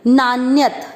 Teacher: न में अ की मात्रा थी और एक अन्यत, अ और अ मिलकर आ बन गया, इसलिए न और अन्यत, अन्यत यानी कोई और नहीं, मेरे अलावा कोई और नहीं है।